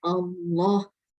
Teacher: Cara membaca lafaz Allah dibaca tebal, panjangnya 2 harakat di sini.